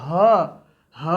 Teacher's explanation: ह भी एक घोष वर्ण है। ह को बोलने में भी गले से कंपन सी उत्पन्न होती है